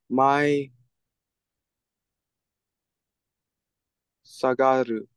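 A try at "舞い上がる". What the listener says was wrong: Sagaru would be the shita, sagatte. This one right here is ue. So how is it read? Mai agaru. So agaru means up, and mai is dance in a fluttery kind of way.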